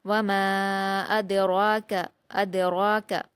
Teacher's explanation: میم پر الف مدہ ہے 2 حرکات کھینچ کر پڑھیں گے